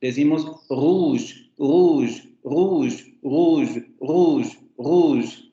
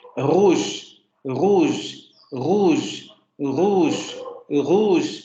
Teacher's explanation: rouge, Pero si escuchamos detenidamente, lo que ocurre es que podríamos llevar esa G que nosotros pronunciaríamos al principio un poco más atrás